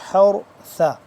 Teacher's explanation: را زبر حر را کو موٹا کر لیں گے